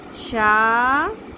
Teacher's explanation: مد اصلی ایک الف کے برابر